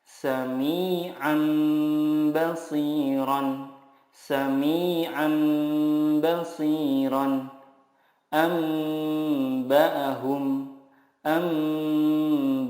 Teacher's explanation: Iqlab adalah nun sukun atau tanwin bertemu dengan huruf ba. Cara membacanya, mengganti nun sukun dengan mim sukun dan disertai gunnah 2-3 harokat